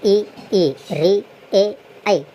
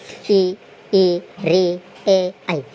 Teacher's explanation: ई री ए आई के उच्चारण करते समय हमारी जिह्वा मुख के अग्रभाग को छूती है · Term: अग्र स्वर